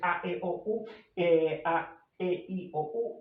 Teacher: la vocal abierta, que sería la A, las semiabiertas o medias, que serían E, O, y las altas o cerradas, que serían I, U, según el grado de abertura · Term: sistema vocálico